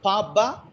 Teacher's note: we have bilabials Papa we use both the lips